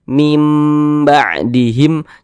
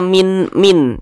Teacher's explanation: Nah maka huruf nun kita rubah menjadi huruf mim ya membunyikannya membunyikannya itu dengan merubah menjadi huruf mim kemudian disertai dengan dengungan disertai dengan ghunah kita baca Min ba'dihim Jangan dibaca min min Jangan dibaca min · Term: iqlab